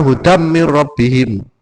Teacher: ghunah ada dengungnya agak panjang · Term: idgham bighunah